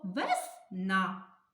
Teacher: який звук ми тягнемо голосом звук а наголос падає на звук а